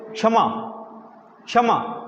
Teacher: सीमित रहनी चाहिए बाहर नहीं निकलनी चाहिए बाहर नहीं निकलनी चाहिए यानी कि मुंह के अंदर ही क बोलेंगे क को बाहर नहीं निकालेंगे